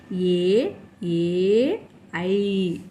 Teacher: కంఠ తాలవ్యాలు అంటే కంఠము తాలవ్యాలు అంటే దవడలు ఈ రెంటి సహాయంతో పలకబడే అక్షరాలు